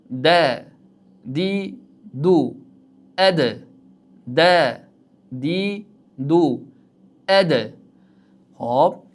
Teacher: Yaʼni unli harakat boʻlmagan holatida dal harfi tebranar ekan.